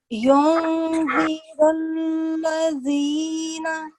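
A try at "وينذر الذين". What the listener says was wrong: What you did was you manifested the sound of Noon Sakin. However, this is wrong. We're not going to do izhar in here. We're going to do ikhfa. So ikhfa is where we have to conceal the Noon Sakin sound.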